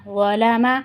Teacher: یہ ظا موٹا حروف بھی ہے اور اس کے ساتھ ساتھ نرمی والا حروف بھی ہے، تو اس کو ہم موٹا کر کے بھی پڑھیں گے اور ساتھ میں نرمی سے بھی ادا کریں گے، اس میں سیٹی نہیں آئے گی۔